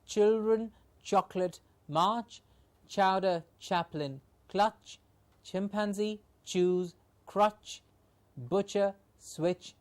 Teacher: the tip of the blade or the blade of the tongue and the teeth ridge are the two articulators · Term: ch sound